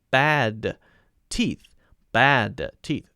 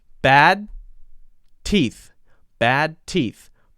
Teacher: T bad teeth bad teeth it's not right it's wrong but if we link together the D and the T then the D almost gets eaten